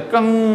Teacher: अनुस्वार का उच्चारण स्थान नासिका है, नाक से ध्वनि निकलती है इनके बोलने में